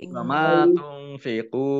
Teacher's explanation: qaf doma nun sukun bertemu dengan huruf fa bacaan ikhfa dibaca samar-samar. Qaf domah wawu sukun mat tobi'i panjang 2 harokat.